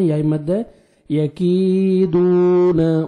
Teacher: واو مد ہے 1 سیکنڈ، دال کو بھی کھینچنا ہے